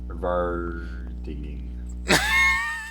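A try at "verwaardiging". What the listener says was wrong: There's only one N, and you made it sound like 2. So you gotta try again. Verwahrdigging.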